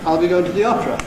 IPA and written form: ɑː.l b.i g.əʊ.n t.ə ð.i ɒ.p.r.ə (I'll be going to the opera)